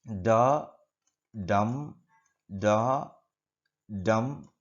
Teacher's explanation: one unstressed syllable, one stressed syllable, one unstressed syllable, one stressed syllable. Like that, 4 metrical feet are available in this particular first line of the poem.